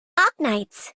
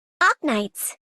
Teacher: she slightly emphasizes the R even though she gets the K completely correct. So, yeah, this is a good effort.